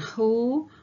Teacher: ketika kita mengucapkan hu, maka lidah bagian belakang atau posisi belakang lidah kita yang terangkat mendekati langit-langit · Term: back vowel